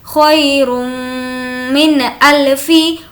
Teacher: نون کی آواز کو ظاہر کر کے پڑھیں گے کیونکہ حروف حلقی ٹوٹل 6 ہے، حمزہ، ہا، عین، ہا، غین، خا، تو یہاں پر حمزہ آ گیا، اس لیے نون کی آواز کو ظاہر کریں گے۔